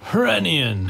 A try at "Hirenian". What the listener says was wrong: The Renian. I'm pretty sure the H is silent.